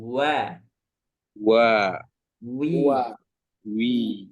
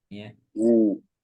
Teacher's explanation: yang wawnya dibunyikan, maka caranya adalah dengan membulatkan dua bibir. Bibirnya dibulatkan Pak kalau mengucapkan wa.